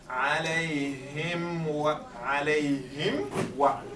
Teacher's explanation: So alayhim, the meme comes, wa starts then, right? So there is no interface between the wa and the meme